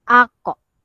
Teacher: sebutan dia itu memang daripada pangkal lidah yang paling bawah yang paling belakang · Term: huruf qaf